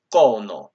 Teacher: The coda fricative will become ha and then create a falling tone, and so overall we have kono with a falling tone on the first o